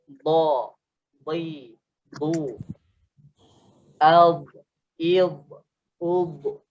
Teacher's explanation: So makhraj tempat keluar dia adalah sisi lidah ditekan ke gigi geraham atas, kanan ataupun kiri. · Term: huruf dad